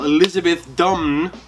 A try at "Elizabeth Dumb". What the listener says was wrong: No, Elizabeth Dumb, like D-U-M-B. the N is silent.